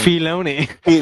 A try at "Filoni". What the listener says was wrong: It's Filoni. It's the I is not pronounced. It's Filoni.